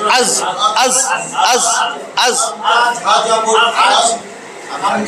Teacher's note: নিচের দাঁতের মাড়ির গোড়ায় লেগে রয়েছে